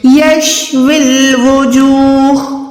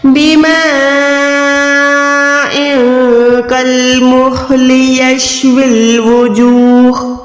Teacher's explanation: واو زیر کو لام کے ساتھ ملا کے ادا کرنا ہے